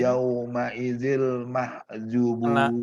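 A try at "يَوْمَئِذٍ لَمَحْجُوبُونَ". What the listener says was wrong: Lamah. La-nya belum dibaca. Jadi setelah idil, lamah. jubun. Dipanjangkan. Yauma idzil lamahjubun.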